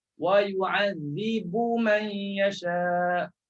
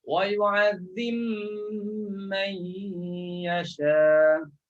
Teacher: Masukkan ba dalam mim. Jangan sebut lagi lah huruf ba. Terus sebut huruf mim.